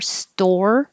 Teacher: when you say store, your tongue curls back for the R,